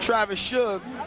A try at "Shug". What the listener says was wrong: There's no S on the end of that.